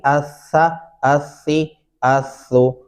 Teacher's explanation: दोनों दांतों के दरमियान जबान की नोक आ जाएगी और सा नरमी से अदा होगा। इसको अस्सा, अस्सी, अस्सु, ये सीन की आवाज में कतअन नहीं पढ़ना आपने, वरना तलफ़्फ़ुज़ जो है वो दुरुस्त नहीं बनेगा।